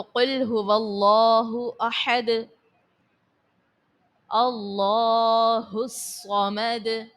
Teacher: کرنے کی صورت میں دال کو ساکن کر دو گے، اور ساکن کرنے کی صورت میں دال جو ہے حرف قلقلہ ہونے کے سبب اس کو خوب ظاہر کرو گے،